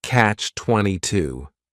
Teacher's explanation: The word catch is just 1 syllable, and then 22 is 3 syllables, and the stress is on that final syllable